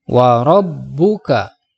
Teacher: warobbuka huruf-hurufnya dibaca tafkhim sebab berharokat fathah kemudian diatas huruf ba ada tanda tasydid maka membacanya harus ditekan